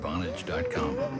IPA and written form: ˈvɑːnɪdʒ (Vonage)